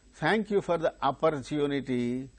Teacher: in the case of opportunity individually the word wherever it occurs the third syllable gains stress